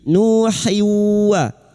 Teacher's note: tanwin bertemu wawu idgham bi gunna masuk pada huruf wawu dan mendengung selama 3 harakat